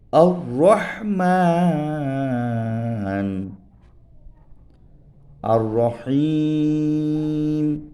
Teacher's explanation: জিহ্বার অগ্রভাগ সেই বরাবর উপরের তালুর সাথে লাগাইয়া এখান থেকে একটি হরফ উচ্চারিত হয় নাম তার র